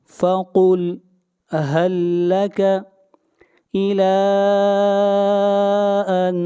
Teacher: الى کے اوپر مد منفصل ہے، اس مد کو 3 الف کے برابر کھینچ کر پڑھا جائے گا